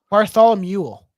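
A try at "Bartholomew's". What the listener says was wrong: no there's no L I know what you're trying to say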